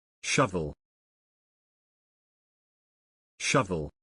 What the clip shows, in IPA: ˈʃʌv.əl